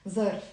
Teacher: in the Lebanese accent, I'm not really saying ظرف, I'm saying z, like a strong z, like a zombie or something.